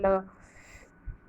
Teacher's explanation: प्रश्न 4, पार्श्विक किसे कहते हैं? उत्तर, इसमें मुख द्वार बीच में बंद हो जाता है और हवा दोनों ओर से निकल जाती है